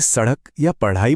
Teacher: क्योंकि ये संस्कृत से नहीं आए, इनको हिंदी ने खुद डेवलप किया है। इन्हें बोलते वक्त जीभ एक झटके से ऊपर उठकर नीचे गिरती है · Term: उत्क्षिप्त व्यंजन